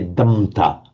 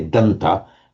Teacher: So we have dam plus ta, again, just by normal phonetic mutation. If you get a m before a t, it just automatically mutates to an n.